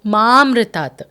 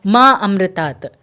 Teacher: if they don't pronounce the long ma, then the meaning becomes opposite.